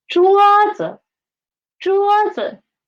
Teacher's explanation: z is the neutral tone, and the pitch of z is lower than 桌, right? 桌子.